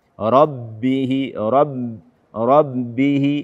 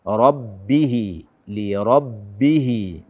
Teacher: bak bertasydid dengan suara dari hidung